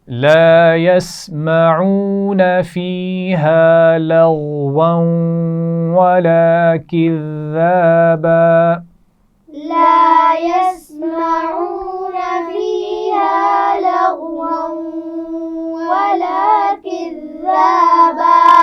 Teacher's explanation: لغوا غین کو موٹا پڑا جائے گا، واو پر تنوین ہے اور اس کے بعد پھر واو ہے تو یہاں پر غنہ بھی کیا جائے گا